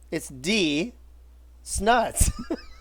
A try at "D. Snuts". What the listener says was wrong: No, you got to say it together, bro. It's D. Snuts.